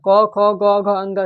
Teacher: इनका उच्चारण स्थान कहाँ से होता है? तो कंठ से होता है।